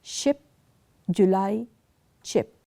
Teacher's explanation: in the case of paletto alular we use either the tip or the blade of the tongue